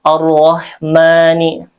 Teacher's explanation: Dan rnya dibaca tafkhim tebal karena berharakat fathah.